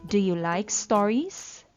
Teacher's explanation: my voice rises at the end part of the question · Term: rising intonation